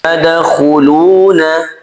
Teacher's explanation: dal sukun di sini dibaca qalqalah sughra, qalqalahnya kecil, memantulnya kecil. Kha dibaca tebal, ya, khu.